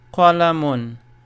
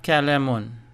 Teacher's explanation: Q is pronounced at the top of the throat with the mouth rounded